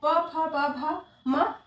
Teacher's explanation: इन वर्णों का उच्चारण स्थान ओष्ठ है, इसीलिए इन्हें ओष्ठ वर्ण कहते हैं।